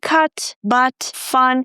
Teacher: it's the stressed version of the schwa sound, so it's a little longer.